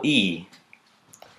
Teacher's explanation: the vowel that is made when the tongue is close to the top of the mouth and far to the front